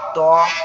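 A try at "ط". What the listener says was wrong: তটা আরো একটু মোটা করে বলবেন, ত এরকম ভাবে।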